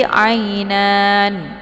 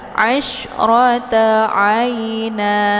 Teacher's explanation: Jadi ketika ada mad dan sebelumnya ada harokat fathah tanwin, maka ini dinamakan dengan mad iwad ya. Jadi mad iwadnya dibaca panjang 2 harokat dan dihilangkan 1 baris ya. Jadi jangan dibaca nanti ainan, itu salah bacaannya.